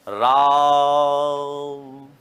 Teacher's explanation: मैं यहां राम को इतना खींचूंगा जितना रा को 3 बार बोलने में समय लगेगा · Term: प्लुत स्वर